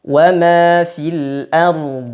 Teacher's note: Aliran suara pada dhad lebih panjang daripada aliran suara pada ra, ya. Karena ra dia bainiyah sedangkan dhad rakhawah.